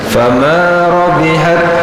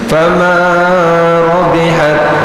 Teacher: mat tabi'inya jangan terlalu panjang